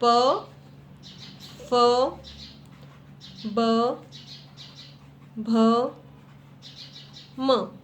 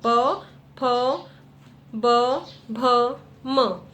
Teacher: इसमें आपकी जीभ नहीं टकराएगी, इसमें आपके होठ एक दूसरे को स्पर्श करेंगी। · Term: ओष्ठ्य